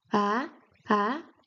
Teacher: Then second tone from middle to upwards.